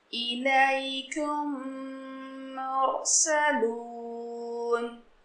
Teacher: Third point इदगाम शफ़ी. میم ساکن کے بعد میم آئے تو میم کو میم سے ملا کر گنہ کے ساتھ پڑھا جائے گا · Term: ادغام شفیع